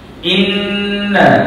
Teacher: Maka hukumnya kena kena didengungkan. Bacaannya kena didengungkan dengan kadar dua harakat. Ah dalam ah perkataan ini hukum tajwidnya ialah wajibal ghunnah.